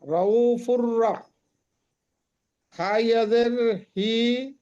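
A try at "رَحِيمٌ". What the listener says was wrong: টানবেন ওটা, টানেন ইয়াই মাদ্দা, ওটা ইয়াই মাদ্দা টান হবে, হা ইয়া জের হি।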